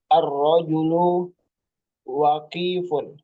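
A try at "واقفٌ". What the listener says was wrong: Waknya panjang.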